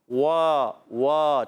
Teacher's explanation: واو پر کھڑی حرکت ہے، کھڑا زبر ہے، ایک الف کھینچنا ہے، ہونٹ گول ہو جائیں گے